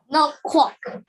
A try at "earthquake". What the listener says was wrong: Not quack. It's a quake. It's a long A sound.